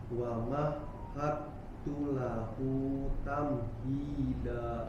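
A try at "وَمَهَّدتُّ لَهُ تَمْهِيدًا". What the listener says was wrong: Nah, huruf H tadi tasydid tidak terputus, tidak ada jeda, mengalir. Nah, nanti dilatih ya, hilang suaranya. Wa mahad, dan jangan hilang, harus terus mengalir.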